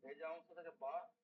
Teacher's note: আর বাকি যেগুলো আছে আপনার দুই ঠোঁট থেকে দুই বা ঠোঁট। হচ্ছে দুই ঠোঁটের ভেজা অংশ থেকে